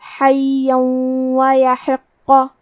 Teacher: کلمت حین میں ہا کی ادائیگی حلق کے درمیان والے حصے سے ہے، یا پہ تشدید ہے تو ہمیں دو حرف کے برابر یا کو پڑھنا ہے، اور کیونکہ اس پہ تنوین زبر ہے پھر حرف الواو آتا ہے کلمت ویحق۔ واو حروف الادغام بغنہ میں سے ہے، تو ہم یہ حکم کو غنہ اور تشدید کے ساتھ ادا کریں گے، حیا ویحق۔